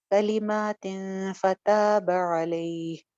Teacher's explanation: من ربہ کلمات فتاب علیہ، کلیمہ، کلی سنگل حرکت، ما ایک الف لمبا، تن کے اوپر ہم اخفا کریں گے کیونکہ آگے فا ہے